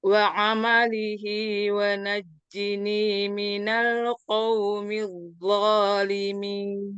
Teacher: Waw dengan syafatan, memonyongkan dua bibir. · Jim itu tengah lidah bertemu dengan langit-langit atas. · Mim dengan merapatkan dua bibir disertai gunnah.